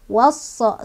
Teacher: Cara bacanya, alif lamnya nggak dibaca, melainkan kita baca langsung ke huruf sad. Wasa, sambil ditekan karena ada tasdid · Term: alif lam syamsiah